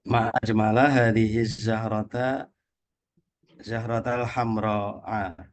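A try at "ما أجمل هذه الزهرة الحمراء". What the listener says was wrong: baik.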